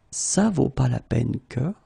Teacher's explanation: it's possible not to pronounce the negative parts.